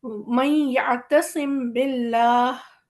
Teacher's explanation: मीम हमारा छुप गया लेकिन बा हमारा क्लियर है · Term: इख़्फ़ाए शफ़वी